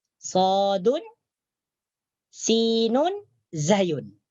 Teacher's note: Daripada mana keluarnya 3 huruf ini, yaitu huruf sad, bukan so, huruf sad, huruf sin, huruf zai. 3 huruf ini disebut dengan huruf sofir. Sofir karena berdesis. As seperti bunyi laba atau bunyi angsa.